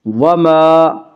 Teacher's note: یدیہا، الف مدہ، الف ہمیشہ مدہ ہوتا ہے، الف سے پہلے ہمیشہ زبر ہوتا ہے، الف مدہ کو ایک الف کے برابر کھینچ کر پڑھیں گے۔